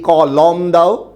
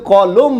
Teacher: দুটো অ পাশাপাশি থাকায় মাঝের অটা কিন্তু আর অ আকারে উচ্চারিত হয় না এটার উচ্চারণ হয় ও হিসেবে